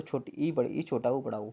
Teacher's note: संवृत का मतलब होता है इसमें मुंह सबसे कम खुलता है। जिसमें सबसे कम मुंह खुल रहा है वो संवृत वर्ण।